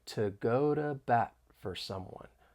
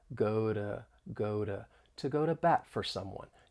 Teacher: the flap T which is specific to the American accent